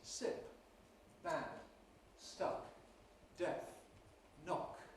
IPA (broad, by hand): sɪp, bæd, stʌk, deθ, nɒk